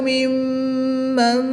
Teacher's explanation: میم مشدد میں ہمیشہ غنہ ہوتا ہے۔ پہلا حرف متحرک، دوسرا حرف ساکن اور تیسرا حرف مشدد ہو تو ساکن حرف کو چھوڑ دیں گے، متحرک حرف کو مشدد حرف کے ساتھ ملا کر پڑھیں گے۔